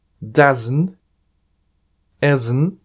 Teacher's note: En las dos últimas palabras, al hacerse de una manera rápida, se pierde la letra T.